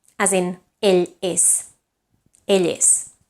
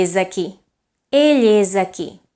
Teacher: so what happened that s that used to be voiceless is now voiced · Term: voicing